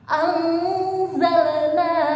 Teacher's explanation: Tidak boleh anzalna, nunnya jangan jelas tapi samar-samar